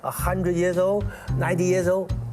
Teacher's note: cantonese don't have the dark l sound as in pull but when they come across an l near the end of a word in english they tend to pronounce it more like a vowel